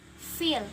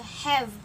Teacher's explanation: F and v is a labiodental. F is a voiceless and v is a voiced.